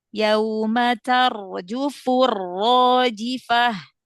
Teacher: ro sukun sebelumnya fathah itu ditebalkan lagi ya, diangkat pangkal lidahnya biar tebal. Yauma tar yauma tarjufur ro tebalkan. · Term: huruf ro